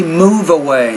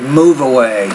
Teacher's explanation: increase the distance between them you want to say move away you want to take the v and blend that to the first sound of the next word